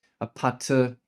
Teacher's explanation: Of course, these words are adapted to Korean phenology that is the sound structure of Korean. vowels are inserted to conform to Korean syllable structure and consonants get changed to uh match the Korean consonants.